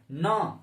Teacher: न नाक से आता है, थोड़ा नाक पे जोर पड़ता है, तो इस वजह से इसको नासिक के वर्ण कहा गया है।